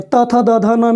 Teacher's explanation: त थ द ध न में जिह्वा दांत को स्पर्श कर रही है।